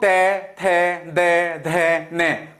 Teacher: जो हमारे मुख से निकलने वाली प्राणवायु है वो कहां टकरा रही है? वो दांतों पर टकरा रही है। तो ये वर्ग हो जाएगा आपका दंतीय वर्ग।